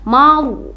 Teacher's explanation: Rul itu alif lam qamariyah ya, karena lamnya bertanda sukun, jadi dibaca zurul maru. Nah, ro-nya tebal ya karena di sana ada fathah, maka dibaca tafkim.